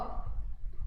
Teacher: व दांत और होठ दोनों से बोला जाता है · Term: दंतोष्ठ